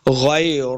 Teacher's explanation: غین کو موٹا پڑھنا ہے، غی لمبا بالکل نہیں کریں گے